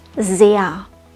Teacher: dieser laut ganz am Ende klingt wie ein schwaches a